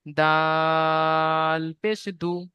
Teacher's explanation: দালটি তিন আলিফ টান হয়েছে